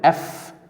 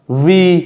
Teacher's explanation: the f is voiceless and the v is voiced